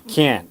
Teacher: And the T is not pronounced. How will you know it's negative? Intonation. It goes down.